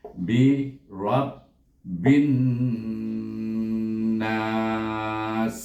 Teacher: huruf nun itu bertasydid, maka dia wajib dibaca dengan gunnah, iaitu dengan dua harakah